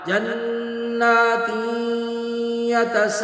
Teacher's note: سے ہے، یہاں پہ ادغام کرتے ہوئے جناتن کی بجائے یتساءلون، نون کی آواز ناک میں چلی جائے گی، اور اس کا ادغام کر دیں گے ہم یا میں